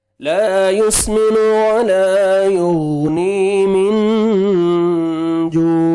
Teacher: Last میں stop کریں گے, عین ساکن ہو جائے گا تو عین کا ساؤنڈ آنا چاہیے. عین کو اپنے صحیح مخرج سے ادا کریں گے.